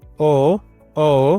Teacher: कंठ ओष्ठ द्वारा जिनका उच्चारण किया जाता है वे वर्ण है ओ औ औका उच्चारण कंठ और होठ के द्वारा किया जाता है।